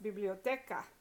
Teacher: Biblioteca, next to last syllable because it ends in an A and an A. And so next to last syllable is stressed.